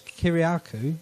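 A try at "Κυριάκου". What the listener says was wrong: You emphasised the ku, the k and the ku. But the emphasis is on the ass. It's Kyriakou.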